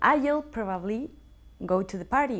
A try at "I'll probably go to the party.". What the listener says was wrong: Muy bien. La has hecho fenomenal